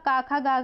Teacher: तो स्वर में आपका आ जो है वो कंठ से उच्चारित होता है